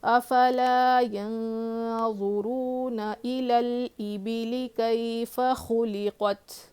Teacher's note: محموسہ میں سے ہے تا، تو جو ہے آواز ہلکی سی کیا ہوگی، سانس باہر آئے گی